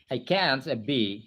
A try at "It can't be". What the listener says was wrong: Bukan I di situ. It can't be, her husband said.